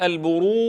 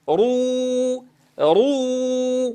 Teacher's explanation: نفخم الراء لكونها مضمومة، ثم ننتقل إلى واو مرققة رو رو، ولا أقول رو رو رو.